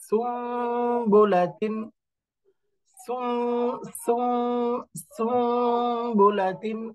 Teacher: এই যে সুন, নুন বলা যাবে না, উচ্চারণ হয়ে যাবে মিমের মতো, সুম্বুলাতিন, সুম্বুলাতিন, এরকম উচ্চারণ হয়ে যাবে। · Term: ইকলাব